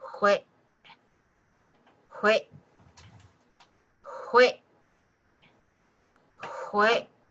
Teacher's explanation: In saying no, it with the glottal again, it's not wait. You're cutting the air off with the back of your throat.